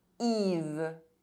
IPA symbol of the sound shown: i